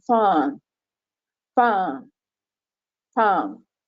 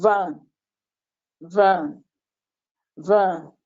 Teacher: So in both cases, you see that in fan, the cords are either far apart and they do not vibrate, but in van, the cords are relatively close and they vibrate.